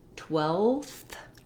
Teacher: Also, notice that when we change to 12th, spelled 12, we have the ulf and th together. So my v sound turns to a f sound, loses its voicing, and adds the th sound